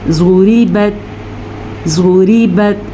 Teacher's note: ज़ुरीबत, ज़्वाद पुर, रॉ बारीक।